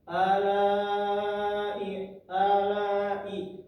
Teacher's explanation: terdapat hukum yang namanya mad wajib muttasil ditandakan dengan tanda seperti alis di atas huruf lam dibaca panjang empat atau lima harakat atau enam